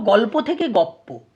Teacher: ল টা পয়ে পরিণত হয়ে গেছে সেটাকে সমীভবন বলছে